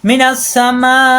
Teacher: এর বাম পাশে একই শব্দে গোল হামজা, এর জন্য 4 আলিফ টান হবে , উপরে 4 আলিফের সংকেত আছে, এই যে মোটা দাগ, মিনাস